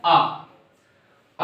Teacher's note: विवृत में मुंह पूरा खुला हो